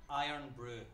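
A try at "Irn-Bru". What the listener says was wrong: No, that's not the word iron. Iron has an O.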